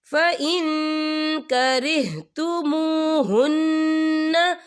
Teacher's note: یہ دیکھیں فَإِن یا نون ساکن ہے، نون ساکن کے بعد جو ہے کاف آ رہا ہے، اور کاف جو ہے اکفا کا ورڈ ہے، تو ہم یہاں اکفا کریں گے، نون ساکن کی آواز کو ناک میں چھپائیں گے.